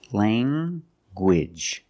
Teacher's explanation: You have the nasal sound, lang, and the hard g.